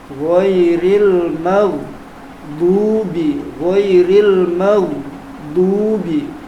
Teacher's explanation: dari pangkal lidah, pangkal pinggir lidah. Jadi dia menggelayut ke depan sampai ke ujungnya. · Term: sifat istitolahnya